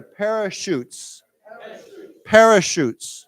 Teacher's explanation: remember when we say this word, it's a sh sound, not a ch sound